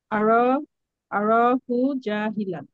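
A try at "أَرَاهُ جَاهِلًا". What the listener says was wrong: Very good.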